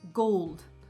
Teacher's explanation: the dark L, in the word gold, can modify the goat vowel that comes before it and make it sound different and even make it a little bit hard to pronounce.